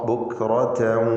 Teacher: റായിന് മാത്രമേ തഫ്ഖീം വരാവൂ, അത് ശ്രദ്ധിക്കുക. മറ്റക്ഷരങ്ങൾക്ക് തഫ്ഖീം വരരുത്.